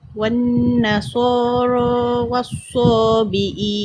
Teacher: Wan nasara pastikan cukup dengan kadar 2 harakat dengungnya.